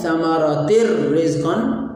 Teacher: اور یہ تا دو زیر راتر، اصل میں یہ لفظ تھا ثمرات رزقا، تو تا دو زیر تین کے بعد حرف را آ گئی ہے، تا دو زیر یہ تنوین ہے، تو اس لیے ہم یہاں پر تا کا را میں ادغام کریں گے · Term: ادغام بلا غنہ